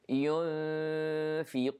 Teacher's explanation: Here we have ikhfa, we hide the noon, and the sound of the ikhfa here is light because the fa is light